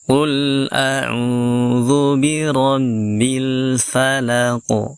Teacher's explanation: auzubirabbil Falaq ingat di sini ada huruf qf yang disukunkan dan huruf q ketika sukun kita pantulkan